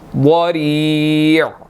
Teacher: वाद जो है वो यहाँ पर मोटा है, इसको हमने अच्छी तरह मोटा करके अदा करना है